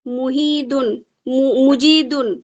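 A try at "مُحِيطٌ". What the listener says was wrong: ওটা দাল নয়, ত।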